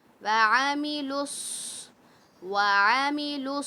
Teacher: یہ تو عین کو حمزہ تھوڑی بنانا ہے، یہ تو عین ہے، حلق کے درمیانی حصے سے نکلے گا